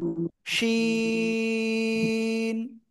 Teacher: তো এই অক্ষরটা ওই একই জায়গা থেকে উচ্চারণ হবে, আগের থেকে লিখতে হবে না। জিহ্বার মধ্যকান, তারপর আবার উপরে তালুর সাথে লাগিয়ে শা শা শব্দ করে আমরা এই অক্ষরটা উচ্চারণ করব।